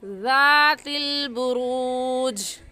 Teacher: زال نرم حروف میں سے ہے تو نرمی سے پڑھیں گے، اور نرمی سے پڑھنے کا طریقہ کہ زبان کی نوک دونوں دانتوں کے درمیان میں لانے سے زال نکلتا ہے۔ تو ہم اسے ذات البروج نہیں کہیں گے، بلکہ زبان کی نوک کو دونوں دانتوں کے درمیان میں لائیں گے اور ایسے پڑھیں گے ذات البروج۔